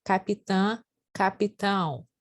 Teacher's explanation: no final do capitã ele é um índice de nasalização